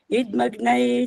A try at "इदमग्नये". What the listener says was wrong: आपने भी इदमग्नय जो बोला है ना, द पूरा नहीं बोला है, इसलिए ये गलत कहलाएगा। इदमग्नय नहीं बोलना होता, इदमग्नय। द का उच्चारण पूरा नहीं हुआ यहाँ, इसलिए गलती होगी।